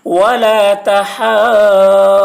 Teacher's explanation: ولا تحاض ضاد واو پیش ذو، واو ساکن سے پہلے پیش ہے، واو مدہ ہوا، اس لیے واو مدہ کو ایک الف کے برابر کھینچ کر پڑھیں گے